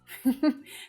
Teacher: Regime. The first syllable sounds like ray. So it's not that short, unstressed sound.